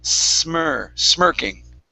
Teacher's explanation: instead of a Z sound it's an unvoiced S